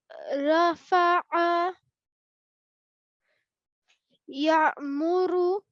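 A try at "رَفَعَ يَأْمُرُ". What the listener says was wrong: We don't want to say raw, that's too long. So we need to make sure it's short as well, because it's only one rafa'a. So I, when I used to learn this rule, then I wrote, what I did is, like a raw vegetable, yeah?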